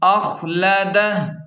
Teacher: وقف کا طریقہ کار یہ ہے کہ وقف کرنے سے الٹا پیش ختم اور ہا ساکن ہو جائے گی